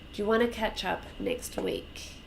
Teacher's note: So want to becomes wanna.